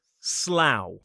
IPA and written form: slaʊ (Slough)